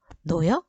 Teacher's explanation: 히읗 다음에 모음이 연결돼요. 자, 모음이 연결되는데 어미죠? 이럴 경우에는 발음되지 않아요